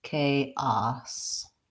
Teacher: a s in chaos sounds like ah-ah-ah and an S and it has first syllable stress so it's long short